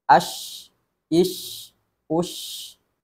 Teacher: ada aliran nafas yang tetap mengalir ketika huruf syin dibaca sukun itu membuktikan huruf Sinin memiliki sifat hams